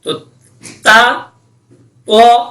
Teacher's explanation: اس کے بعد ہے تو، تو، اور تا میں یہ فرق ہے کہ تو پڑھتے ہوئے ہونٹوں کو گول کرنا پڑتا ہے